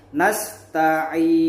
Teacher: Boleh dibaca 2 harokat nasta'in, boleh juga 4 harokat nasta'in, boleh paling panjang 6 harokat nasta'in. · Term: mad arid lis sukun